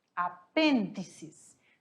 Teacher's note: Vamos. A sílaba tônica dela é di, apêndices.